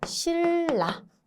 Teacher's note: 니은과 리을이 붙어 있을 때 니은이 리을로 변하고자 하는 현상이다 라고 생각하시면 됩니다 그래서 신라 이렇게 발음이 되겠죠 자 그다음이 밖의